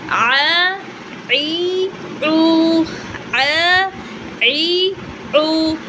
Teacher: Hamza stop the sound. Ain allow the sound to continue partly.